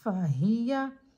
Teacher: زبر کو ہم بغیر کھینچے بغیر جھٹکا دیے پڑھیں گے، جیسے یا زبر یا، پیچھے سے ملا کر پڑھیں فہیا۔